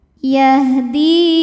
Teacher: Di ini hukumnya adalah mad tabi'i dhahiri, sebab ada ya sukun yang didahului baris kasrah, maka huruf dal yang berbaris kasrah kita panjangkan 2 harokat.